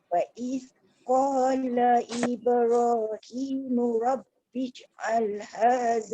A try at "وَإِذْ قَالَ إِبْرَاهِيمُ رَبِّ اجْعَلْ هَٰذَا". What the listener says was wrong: Bija'al. Dia jangan dia jangan keluar angin. Rabbi ja'al. Jaga satu ro, satu jim tu jangan lantunan dia tu putus. Rabbi ja'al. Lembutkan. Rabbi ja'al.